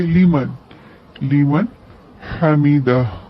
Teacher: سمیع اللہ لیمن حمیدہ، نون ساکن ہے، اس کے بعد حروف حلقی میں سے ہا ہے، اس لیے ہم یہاں پر اظہار کریں گے، لیمان نہیں پڑھیں گے، لیمن، لیمن حمیدہ۔